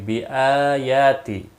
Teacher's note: حمزہ کے اوپر کھڑی زبر ہے، یا کے اوپر بھی کھڑی زبر ہے، ایک ایک الف کے برابر کھینچ کر پڑھیں گے